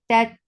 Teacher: this ta will get sifa of shidda, the sound will cut off abruptly. Tat, ta, for fatha upon jaws, the sound is short.